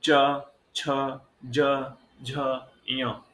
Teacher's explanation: ये जब हम च वर्ग के अक्षर बोलते हैं तो सर्वाधिक सक्रिय अंग हमारा तालु होता है।